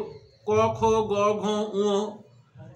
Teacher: যেমন ধরো ক বর্গ, ক খ গ ঘ উ, এই ক বর্গের উচ্চারণ স্থান হলো কণ্ঠ